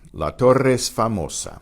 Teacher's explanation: Notice the E in torre and the E in es blend together and sound as one.